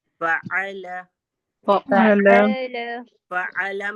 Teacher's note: दोनों ऊपर के दांत लगे हमारे नीचे के होंठ पे, फा, फिर आइन हलक से, और ला में जबान का किनारा ऊपर के तालू से लगा, ठीक है।